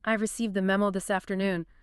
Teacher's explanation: High pitch jumps, maybe stress on a few different words, and a very fast pace. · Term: high excitement